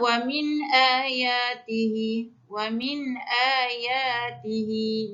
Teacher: Nun sakinah baris mati bertemu dengan hamzah, tidak boleh dengung sebab hukum dia izhar halki.